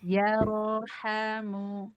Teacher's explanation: Kemudian ro sukun sebelumnya fathah ini juga dibaca tebal